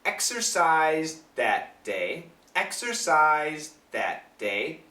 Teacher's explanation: Now the TH is a little bit weak, but you can hear it. The reason it's a little bit weak is because this Z sound is very strong.